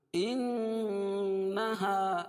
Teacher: نون مشدد میں غنہ ہوتا ہے